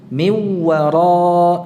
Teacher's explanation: seperti bacaan Imam Hamzah miwara tanpa gunnah, jadi tidak ditahan